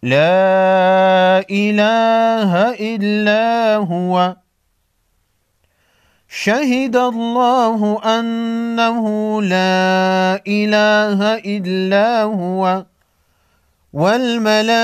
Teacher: بڑی مت کو 5 الف کے مقدار کھینچ کر پڑھیں گے